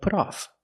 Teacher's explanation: We hear that T in put change to a fast D because it's between vowels.